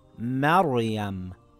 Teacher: It will read as MaR-yam with a heavy Raa.